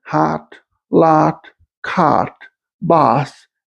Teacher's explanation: Another feature of this dialect is unrounded vowel, for example, hot, lot, cot, boss, etc.